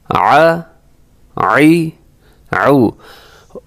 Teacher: وسط حلق کے درمیان سے اس کو ادا کرنا ہے، تھوڑی سی کوشش کر کے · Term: عین